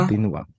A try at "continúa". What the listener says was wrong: Yung continuar, pag kinonjugate mo yan sa LA usted, lalagyan mo ng asento sa U. So, el país continúa creciendo económicamente.